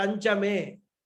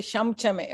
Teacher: So that Makara converted into Nakara sound is compulsory in Veda, whereas other places it is optional.